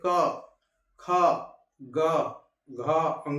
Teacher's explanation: ये क वर्ग जो है कंठ से, ठीक है, कंठ से बोले जाने वाले वर्ग हैं, जो कंठ से हमारा निकलता है।